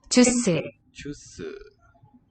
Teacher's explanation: in order for the s to be pronounced as a s fricative, it needs to be the beginning of the syllable. We say onset.